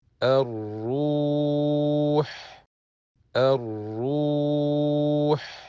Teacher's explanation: Lam al-Ta'rif will not be pronounced, as it is Lam Shamsiyya, since the Sukoon sign on the Lam is absent, and the following letter is Mushaddad.